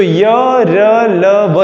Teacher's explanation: अब अंतःस्थ की बात करूं, अंतःस्थ व्यंजन जो होते हैं यानी बिना ये दंतोष्ठ होते हैं, यानी दंत और ओष्ठ की सहायता से उच्चारित होते हैं, परंतु इनमें ध्वनि में ज़्यादा अवरोध उत्पन्न नहीं होता है